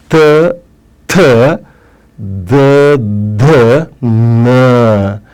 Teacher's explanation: ಇವುಗಳು ಹಲ್ಲಿನ ಸಹಾಯದಿಂದ ಹುಟ್ಟಿದ ಕಾರಣಕ್ಕಾಗಿ ಇವುಗಳಿಗೆ ದಂತೆಗಳು ಅಂತ ಕರೀತಾರೆ ದಂತೆ ದಂತ ಅಂದ್ರೆ ಹಲ್ಲು ಇವುಗಳಿಗೆ ದಂತೆ ವರ್ಣಗಳು ಅಂತನು ಕರೀತಾರೆ ಇನ್ನು ಕೊನೆಯದಾಗಿ · ತ ಅನ್ಬೇಕಾದ್ರೆ ಮೇಲಿನ ಹಲ್ಲಿನ ಹಿಂಭಾಗಕ್ಕೆ ನಮ್ಮ ನಾಲಿಗೆ ತುದಿ ಅದಕ್ಕೆ ಟಚ್ ಆಗಿರುತ್ತೆ.